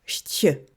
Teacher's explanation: Autrefois, il se prononçait avec un son T au milieu, chtje. Mais aujourd'hui, on peut dire que cette prononciation a disparu.